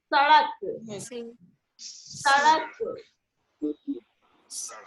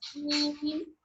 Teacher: इसमें सीन में सीटी की आवाज आना ही है।